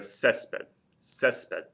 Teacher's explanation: you can hear that the stress is over that first e it ends in something other than a vowel and S so